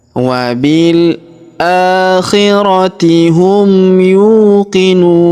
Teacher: huruf nu kita panjangkan 2, 4 atau 6 harokat karena di depan huruf nu terdapat waw sukun sebelum huruf pemberhentian, dan huruf pemberhentian huruf na kita sukunkan atau kita matikan.